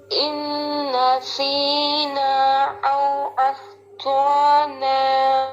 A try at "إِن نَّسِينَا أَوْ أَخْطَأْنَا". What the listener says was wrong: مد کریں یہاں پہ، لمبا کریں اسے.